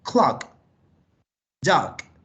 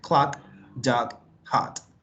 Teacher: Una O cortica, clock, dog, que es una mezcla entre O y A, más o menos.